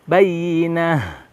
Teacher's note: Tidak ada yang sulit sepintas di sini, hanya melafalkan ta marbutoh di akhir ayat ini harus diposisikan menjadi ha, ya, ha besar